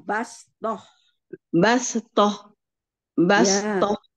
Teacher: tak marbutoh itu kalau berhenti jadi H ya